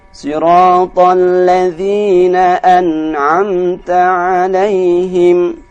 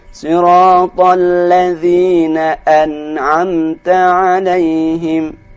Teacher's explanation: Maka artinya huruf nun dan mim mati yang di sini harus dibaca dengan jelas.